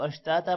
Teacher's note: دو زبر ایک زبر میں کنورٹ ہو جائے گا اور اشتاتا ہو جائے گا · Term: وقف